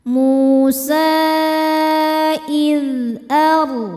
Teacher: Karena sebelum ro sukun ada baris fathah maka rnya tebal. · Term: tafkhim